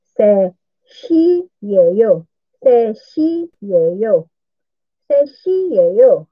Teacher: So, ang T hindi yan ang pinapronounce na. Inuumit yung T.